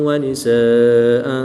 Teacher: الف مدہ کے بعد حمزہ اسی کلمے میں ہے تو یہاں پر مد متصل ہوگی، 3 سے 5 الف تک کھینچ کر پڑھیں گے۔